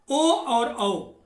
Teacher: ओ और औ यह 2 वर्ण हैं जिनका उच्चारण कंठ और होष्ठ से होता है, क्योंकि ओ आ और उ से मिलकर बनता है।